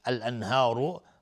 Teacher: الانهار الف لام قمری نون ساکن بهش های دو چشم اظهار حلقی. الانهار را مفخم هست چون ضمه داره